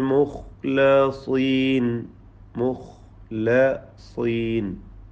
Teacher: അൽ മുഖ്ലസീൻ മുഖ്ലസീൻ ഖാഇന് തഫ്ഹീമാണ്, സ്വാദിനും തഫ്ഹീം. സ്വാദിന് ഖസ്ര ആയതുകൊണ്ട് കുറഞ്ഞ തഫ്ഹീം മാത്രമാണ് നൽകുക, തടിപ്പിച്ച് ഓതുക എന്നർത്ഥം